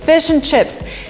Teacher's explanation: the word and is in a weak form, and basically we only say n